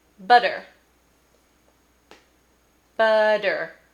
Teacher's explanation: That D kind of sound that you hear in the middle of the word butter is actually not a D, it's a tapped R.